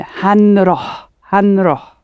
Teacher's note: what happens is that the n sort of attaches itself to the ha. So it's more like han roh.